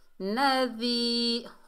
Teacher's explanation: ہماری زبان کی نوک جب اوپر والے دانتوں کے کنارے سے لگے گی تب جا کے ذال میں نرمی پیدا ہوگی